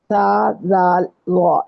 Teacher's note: یہ زبان کی ٹپ جو ہے یہ یوز ہوگی اور یہ لگے گی دانتوں کے بالکل اوپر سرے کو جہاں سے ہم بائٹ کرتے ہیں